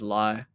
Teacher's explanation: he doesn't use an F sound at all. When he says life, he says lie.